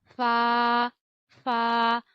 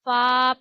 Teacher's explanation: ऊपर के जो दांत हैं उनके किनारे यानी जो नोक हैं नीचे की तरफ वह किनारे जो हैं वह आप नीचे वाले हंठ के गीले हिस्से पे लगाएंगे और फ पढ़ेंगे।